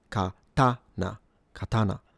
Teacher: when it comes to the pitch accent, this is a low-high-low pattern. These are called nakadaka patterns, and you start low, ka, you go high, ta, and you return low, na, katana, katana.